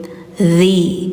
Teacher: Lidah ujungnya ditempel gigi atas ya, jadi kayak digigit.